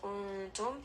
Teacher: إذ kuntum, dal, just rest on this for a moment. Kuntum, nun sakin is going to have ikhfa, mim is going to have tawassut